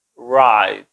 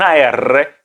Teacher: la r anglosajona en su pronunciación fonética es es más suave casi no toca el cielo de la boca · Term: la r americana